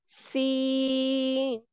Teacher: हम जुबान की नोक को सामने वाले नीचे के दांतों के किनारों से मजबूती से लगाकर बारीक और सीटी वाली आवाज में पढ़ेंगे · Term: सीन का मखरज